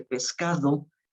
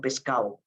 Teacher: Por ejemplo, escuchamos muy comúnmente que la gente no dice pescado, sino pescado, ¿no? La D intervocálica se pierde